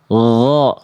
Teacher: Sama kayak kho tapi nggak pakai nafas. Gho, cuman ngalir suara aja.